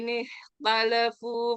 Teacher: dibaca tafkhim nisbi ya. Karena huruf kha sukun sebelumnya kasroh.